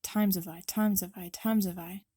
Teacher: There's a reduction of the H from the word have, which happens all the time with this word.